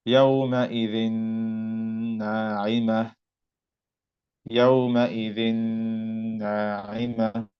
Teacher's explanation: I made the ghunna sound from my nose when I said this noon right here. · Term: idgham with ghunna